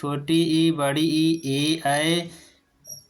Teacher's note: ये जीभ के अगले हिस्से से बोले जाने वाले स्वर हैं, इसलिए इन्हें अग्र स्वर कहा जाता है।